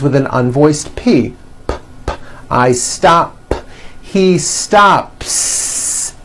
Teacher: stop ends with an unvoiced p